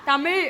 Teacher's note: அதுக்கு என்ன சொல்லணும்னா தமிழ் அப்படி சொன்னோம்னா நாக்க மடிச்சிடணும் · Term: சிறப்பு லகரம்